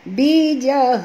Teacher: ini adalah ta marbutah kalau kita berhenti ya, tuan-tuan. Bunyi yang keluar di sini ialah bunyi ha.